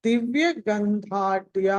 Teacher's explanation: అక్కడ ధ మహాప్రాణము, ధ మహాప్రాణం, రెండు కూడా మహాప్రాణాలు